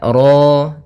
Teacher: Kemudian pada lafal ro di sini ro tafkhim rnya tebal ya kita namakan dengan ro tafkhim.